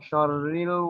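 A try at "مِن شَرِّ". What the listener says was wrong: হ্যাঁ শাররিল কেন কি বললাম আমি? শাররিল মুখ পাশ। এখনো হচ্ছে না, আপনার মুখ পাশ হচ্ছে না, সুন্দর করে পাশ করে আরো পাশ করেন। শাররিল মুখ পাশ করেন একদম। বলেন তো শাররিল মুখ পাশ রেখে।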